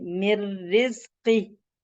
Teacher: इदगाम है मगर बिला गुन्ना, विदाउट गुन्ना, गुन्ना नहीं होगा, इसलिए हम क्विकली कसरा से रॉ की तरफ जा रहे हैं